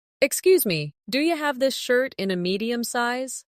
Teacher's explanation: Listen to how do you becomes do ya in natural speech. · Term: connected sound